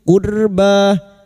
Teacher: ra sukun yang didahului dhammah dibaca tafkim. Qurba, ba alif kecil di atas 2 harokat matabi'i.